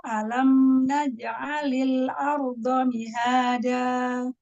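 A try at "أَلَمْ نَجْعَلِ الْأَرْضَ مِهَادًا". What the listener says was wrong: Mihada. Makhraj huruf dal, majukan lagi ujung lidah ketemu dengan ujung gigi tempat tumbuh gigi seri atas. Huruf dal. Mihada.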